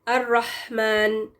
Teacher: اس میں جو زیادہ تر غلطی ہوتی ہے نا وہ یہ کہ پہلے تو یہ رحمان پڑھ دیتے ہیں، رحمان، رہ والی آواز نہیں آنی چاہیے، بالکل صرف ہوا آئے گی، آپ اپنی زبان کو پش کریں گے اور ہوا نکالیں گے تھوڑی سی پریشر کے ساتھ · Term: ہا ساکن